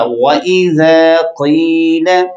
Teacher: وَإِذَا، زال کو نرم، قاف کو موٹا